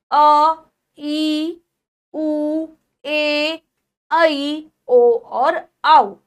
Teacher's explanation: इन स्वरों को बोलने के लिए ह्रस्व स्वर से लगभग 2 गुना समय लगता है, दुगना। जितनी देर में ह्रस्व स्वर को बोला जाएगा उससे दुगनी टाइम में दीर्घ स्वर को बोला जाएगा।